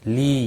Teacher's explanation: یا مدہ ہے، ایک الف کے برابر کھینچ کر پڑھیں گے